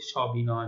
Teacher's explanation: স এর উচ্চারণটি অ এর মতোই হচ্ছে, স্বাভাবিক হচ্ছে, যেটাকে আমরা বিবৃত বলে থাকছি।